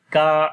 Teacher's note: Kaf we long due to standing fatha on it, ka, and make the light sound of kaf.